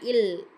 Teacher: மேல்வாய் பல்லின் அடியை நாக்கின் ஓரங்கள் தடித்து நெருங்குவதால் பிறக்கும் எழுத்து